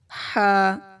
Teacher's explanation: ہا کی آواز حلق سے نکلے گی، گلے کے مڈ سے